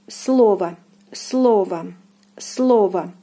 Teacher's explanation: Here the stress falls on the first O, and it is pronounced as слово, слово, слово.